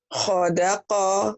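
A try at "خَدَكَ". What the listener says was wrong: iya iya, hodaka ketukar. Ibu mau bikin o semua. Ini khoda apa Ibu? khodaka.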